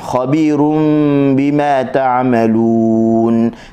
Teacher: tanwin bertemu dengan ba, iklab sekali lagi, tutup mulut dengan 2 harakat tanpa tekan